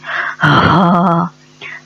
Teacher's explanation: ہا جو ہے وہ ہمارے حلق کے آخری حصے سے، لوئسٹ پارٹ سے ادا ہوتا ہے